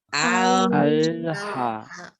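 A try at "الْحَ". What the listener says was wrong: Al-ha. Ini ada yang bunyinya tebal nih. Kalau yang bunyinya tebal itu berarti bukan yang paling lancip. Itu bukan yang lancip. Al-ha. Jadi lam jangan ditukan, tempelkan. Begitu ha, lepas. Al-ha. Ya, merasakan ujung lidah yang paling lancip.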